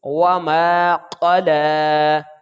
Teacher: قاف موٹا پڑھیں گے اور اس کو جلدی بھی ادا کریں گے · لام کے اوپر کھڑی زبر ہے تو اس کو ایک الف کے برابر کھینچیں گے